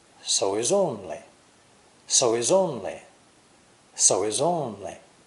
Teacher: the H in he is not pronounced the linked words are so he is only